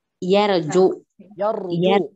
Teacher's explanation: Tebal. Apabila ro-nya sukun, kita lihat dari huruf sebelumnya, yaitu pada huruf fathah, maka tebal. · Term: ro tebal